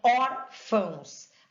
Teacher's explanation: Então, órfãos. A sílaba tônica está no or. Fãos nasaliza, é indicativo de nasalização.